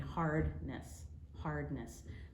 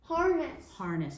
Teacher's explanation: You're putting in a D. You're saying hardness.